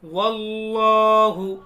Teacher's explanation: اللہ کے لام کو پر پڑھیں گے